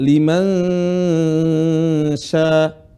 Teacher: ketika ada nun sukun bertemu dengan sya, suara nun menjadi samar. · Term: Ikhfa